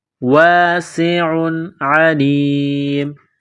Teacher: تنوین کے بعد عین ہے، حروف حلقی ہے تو تنوین پر غنہ نہیں کریں گے